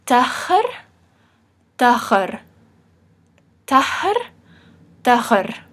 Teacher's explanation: That's the very back ch, like in Bach.